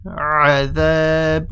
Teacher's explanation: Try and say the ayn a bit more. So make sure the a is there.